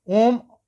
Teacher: इसमें मूल स्वर की अपेक्षा तीन गुना समय लगता है जैसे ओम का उच्चारण करते हो ओम में जो है अ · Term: पलू स्वर